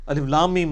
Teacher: الف لام میم، اس کو ایسے ہی پڑھنا ہوتا ہے، الف لام میم نہیں ہے، یہ وہ اردو میں ہے، عربی میں ایسے ہی پڑھنا ہوگا، 3 سے 5 الف تک کھینچنا ہوگا، لام کو بھی اور میم کو بھی، اور لام اور میم چونکہ اس کا جنکشن ہے تو میم کے اوپر تشدید بھی ہے، غنہ بھی ہو رہا ہوگا